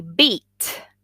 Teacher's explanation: The E in beat is tense. Tense means you really put the whole face into that E.